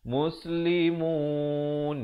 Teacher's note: Dia lalu melalui waw dulu, jangan terus masuk nun.